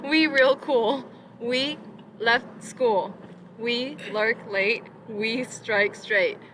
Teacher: it is really clear the rhythm is very choppy